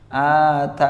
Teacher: Nah, di sini boleh dua cara juga, yakni boleh dengan sukun yang sempurna. Sukun yang sempurna itu maksudnya ya sukunnya dibaca dengan jelas nunnya, atan, ya. Nah, boleh juga dengan raum.